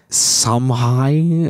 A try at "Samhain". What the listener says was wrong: I think it's Samhain. I don't think the M is pronounced at all.